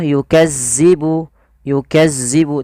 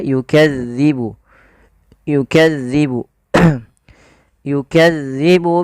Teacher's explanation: dalal ini tidak boleh dibaca atau tidak boleh diganti dengan huruf Zai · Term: huruf dalal